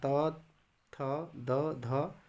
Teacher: दंत्य जिह्वा की नोक ऊपरी दांतों को स्पर्श करता है